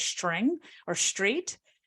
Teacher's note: And that often happens because of co-articulatory tendencies. So the R sound causes backing of the tongue · there's a new change where people say that sometimes as string or street, where it's like this SH sound